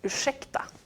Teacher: it has the combination R and S, which turns into sh, the sound that's in ursäkta.